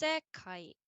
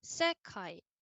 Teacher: So you can hear the first part goes up and then the second part comes down. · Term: pitch accent